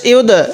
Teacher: ইয়া দাল পেশ ইউদ, দালটা একটু ধাক্কা দিয়ে পড়বো, কারণ দালটা হলো কলকলার একটি হরফ